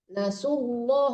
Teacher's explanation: nasullah itu tebalkan langsung ya jangan tipis dulu baru tebal